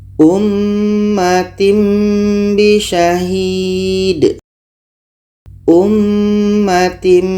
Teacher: bunyi tanwin kita tukar kepada mim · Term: iqlab